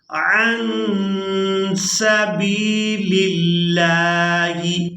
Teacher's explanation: لفظ اللہ کے لام کو باریک ادا کرنا ہے کیونکہ اس سے پہلے والا جو حرف ہے اس کے نیچے ہے زیر، تو لفظ اللہ کے لام کو باریک ادا کریں گے۔